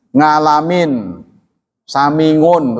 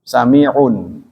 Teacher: Kalau orang Jawa Tengah ain dibaca eng.